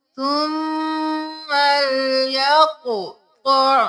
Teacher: की आयत नंबर 15 में देख लीजिए सुम्मल यक़ता कॉफ मोटा क़ मोटा कॉफ पे कलकला करेंगे